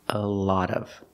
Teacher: for the O in lot, it's the short ah sound like hot and stop